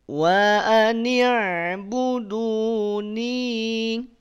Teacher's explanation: Ni dua harokat habiskan. Jangan dua harokat direm.